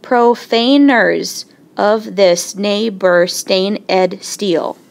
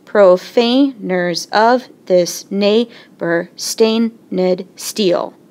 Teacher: I'm going to start with an unstressed syllable, and I should end with a stressed syllable. If I alternate, we see that it fits. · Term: iambic pentameter